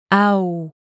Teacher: This one starts out at a and ends at u, au. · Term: diphthongs